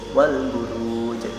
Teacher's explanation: Dan al an'am wal buruj alif lam dengan huruf ba maka dibaca dengan jelas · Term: alif lam qamariyah